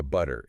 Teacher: the T sound in a word like butter, right? In American English, it it often gets softened, right? So, it sounds more like butter.